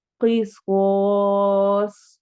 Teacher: ہم اس کو سوا سوا نہیں پڑھتے، سوا نہیں پڑھتے، سو، اسی آواز کو، سواد کی آواز ہے جو موٹا حرف ہے اس کی آواز کے ساتھ ہی الف کو بھی موٹا کر دیتے ہیں